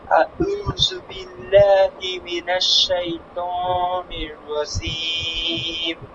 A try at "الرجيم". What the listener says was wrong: রজিম, রজিম শক্ত হবে, জিমটা শক্ত। রজিম। أعوذ بالله من الشيطان الرجيم.